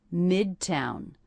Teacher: Stress on the first syllable here, and that is a true T.